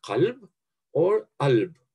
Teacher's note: in the sedentary dialects, the people either say qalb or alb, which shows this typical urban sound shift from qaf to hamza.